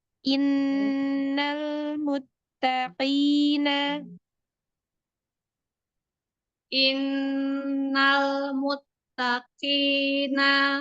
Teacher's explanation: Tak itu punya sifat syiddah. Namun syiddahnya pun tetap pakai tempo, nggak boleh cepat-cepat. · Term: tasydid